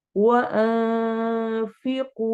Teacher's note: इख्फा हो रहा है, नून की आवाज को छुपाएंगे